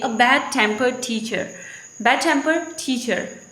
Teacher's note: the stress will move toward the teacher, will not remain on the tempered. So we are saying that when it is used as a noun phrase, then the stress position will change. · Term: shift of stress